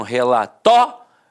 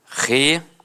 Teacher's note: Algumas pessoas dão uma extensão na fala e acabam falando relatório. Então, separa o O do I e fica assim, ó, relatório. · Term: proparoxítona eventual